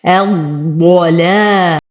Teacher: همزة الوصل تسقط في درج الكلام. اللام شمسية لا تنطق، هذه الألف للتفرقة، فأنتقل من ضمة الواو إلى تشديد الضاد المفخمة الضلال.